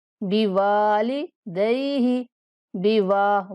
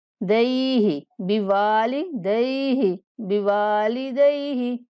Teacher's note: واو کو کھینچنا ہے، اس کے بعد لام کو نہیں کھینچیں گے